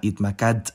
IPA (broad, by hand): hitmaˈkadt